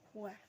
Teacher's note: Kedua bibir membentuk bulatan